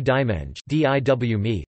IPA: diwˈmẽɲʒə